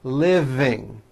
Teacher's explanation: yes the V is voiced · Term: voiced V sound